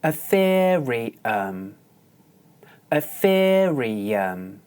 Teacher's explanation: the consonant sound y occurs between these 2 syllables. This is an example of glide.